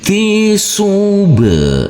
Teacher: huruf ba di sini kita pantulkan karena di sini huruf ba adalah bacaan qalqalah, wajib kita pantulkan